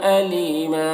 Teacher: یا مدہ ہے اسے ایک الف کے برابر کھینچیں گے، اور یہاں پر وقف کریں گے تو ایک زبر کے ساتھ الف پڑھیں گے